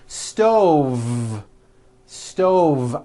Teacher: I cooked dinner on a hot stove with a voiced V